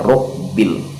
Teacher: huruf ba ini huruf yang bertasydid, jadi agak disyiddahkan, agak ditekan